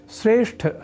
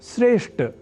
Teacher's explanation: श्रेष्ठ शब्द में ठ इस महाप्राण अक्षर का उच्चारण व लेखन लोग ट इस अल्पप्राण स्वरूप वाले अक्षर से परिवर्तित कर दिया करते हैं। इस अशुद्धि के कारण की ओर यदि हम ध्यान दें तो कह सकते हैं कि ठ को ट इस रूप में परिवर्तन साधारण रूप से भाषा के प्रयोग के समय मुख सुख की प्रवृत्ति के कारण से है।